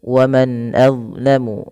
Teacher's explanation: bacaan izhar halqi. Yaitu dengan memperjelas bacaan suara nunnya diperjelas dengan baik.